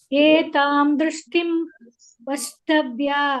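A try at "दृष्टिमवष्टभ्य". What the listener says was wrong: ವಷ್ಟಭ್ಯ ಅನ್ಬಾರದು ಅವಷ್ಟಭ್ಯ ಬರಬೇಕು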